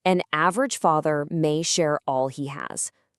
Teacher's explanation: That one little letter A can be the short sound in has, the broad a in father, the long a in may, the air sound in share, the a sound in all, and of course our secret weapon, the schwah uh in an.